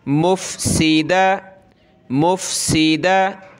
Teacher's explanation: یہ میم ہے، اس میم کو فا کے ساتھ ملانا ہے